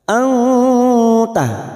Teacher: Nun sukun bertemu ta, ikhfa hakiki, dan ini juga yang disebut dengan ikhfa aqrab. Kita dengungkan selama 2 atau 3 harokat. Anta, siap-siap membunyikan huruf depannya yaitu huruf ta.